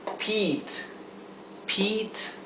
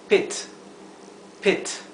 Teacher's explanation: Así que, por eso, cuando tenemos la doble E o la E y la A, hay que ser cuidadosos de que suene I, con una I larga. Y cuando es una I sola entre dos vocales, como aquí es E, es una I bien cortita.